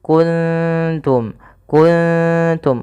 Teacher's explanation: Kalau di sini ketemu ta, maka samarkan ikhfanya atau nunnya samarkan ke ta